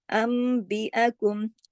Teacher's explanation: नून साकिन या तनवीन की आवाज को हम मीम में बदल देंगे, इसका नाम है अकलाब।